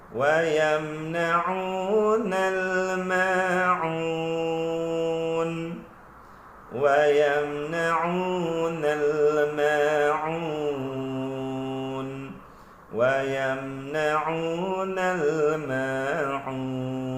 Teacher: Hamzah dekat bawah ni, ain dekat atas tengah-tengah kerongkong.